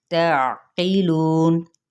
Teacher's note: اخفاء حقیقی ہوگا، میم پہ اظہار شفوی، تعقیلون، تا زبر عین، عین کو واضح طور پہ آپ نے وسط حلق سے ادا کرنا ہے